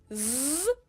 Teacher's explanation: a voiced s would be Z there's a tone coming